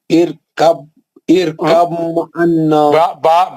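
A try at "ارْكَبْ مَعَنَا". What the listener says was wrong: با کا آواز جو ہے بالکل نہیں نکلنا۔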